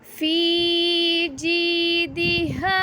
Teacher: یا مدہ کو ہم ایک الف کے برابر لمبا کرتے ہیں۔ فی جیدہا، ہاں کے ساتھ الف ہے، الف کو ہم ایک الف کے برابر لمبا کریں گے۔